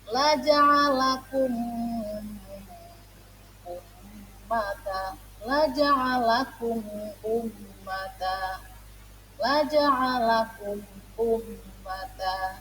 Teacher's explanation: cara baca izhar syafawi dengan menyuarakan mim mati dengan jelas di bibir serta mulut tertutup. Nah, di sini cara membaca izhar syafawi, mulutnya harus ditutup teman-teman.